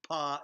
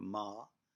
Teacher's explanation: the mouth and humming in the mouth with the lips closed p is a plosive and implies a precipitation m is a continuous sound a humming sound and it is this humming sound that is made by the